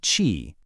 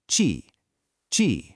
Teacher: That sharp, it's a really sudden, powerful release of air. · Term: powerful puff of air